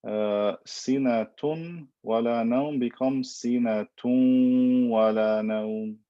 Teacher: And again, it's because the letters yanmu, ya, noon, mim, and waw come from makharij that are very close to the noon, and this makes it difficult to pronounce the noon clearly. So we merge it, but we also maintain the n sound of the noon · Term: idgham bi ghunna